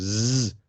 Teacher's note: you can feel that it is voiced compared to the unvoiced counterpart which is the s so z your voice box vibrates and the s doesn't um